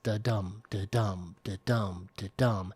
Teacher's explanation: it's always da-dum, da-dum, da-dum, where the stress is always kind of like on that second part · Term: iambic pentameter